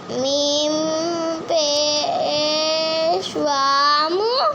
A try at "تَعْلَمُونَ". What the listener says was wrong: واو کو لمبا کرو. میم پیش وا.